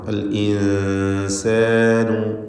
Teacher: സാക്കിനത്തായ നൂനും ശേഷം സീനും വന്നു. ഇഖ്ഫ ഹഖീഖി നൽകി നൂനിനെ മണിച്ചുച്ചരിക്കണം